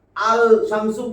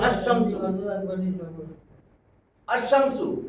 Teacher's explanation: আল লাগাইলে লামের উচ্চারণ হবে না। এবং লামের উচ্চারণ যদি না হয় সুকুন যুক্ত লাম, তাহলে তাসদিদ দিয়া শামস, হুরুফে শামসির যে প্রথম হরফটা লামের পরে আসবে, আলিফ লামের লামের পরে, এটারে তাসদিদ দিয়া মিলাইয়া পড়তে হবে, ইদগাম করে পড়তে হবে।